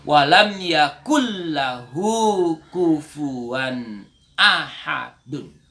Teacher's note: Idgham bila gunna, masuk tanpa dengung.